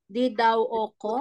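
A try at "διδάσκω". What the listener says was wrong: Ito S. Pinopronounce po ito ng S.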